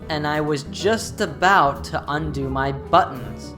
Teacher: In this utterance, she only stresses these words: I, was, about, undo, buttons. The rest of the words reduce.